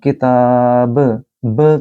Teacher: قلقلہ یعنی کہ آواز گونجتی ہوئی محسوس ہو